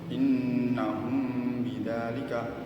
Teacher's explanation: Maka pengucapannya mim disampaikan bibir tanpa ditekan kuat, disertai dengan gunnah atau dengung. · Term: ikhfa safawi